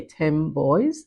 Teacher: the alveolar nasal sound at the end of 10, takes on the bilabiality of the following sound in the word boys